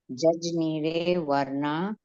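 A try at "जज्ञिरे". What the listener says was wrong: Jannire Jajni, do not say judge. Jannire, as a j becomes silent.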